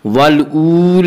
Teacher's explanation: الآخرۃ والأولی, والأولی واو مدہ وہ واو جو ساکن ہو اس سے پہلے پیش ہو, واو مدہ کو ایک الف کے برابر کھینچ کر پڑھیں گے. والأولی لام کے اوپر کھڑا زبر ہے, کھڑا زبر کو ایک الف کے برابر کھینچ کر پڑھیں گے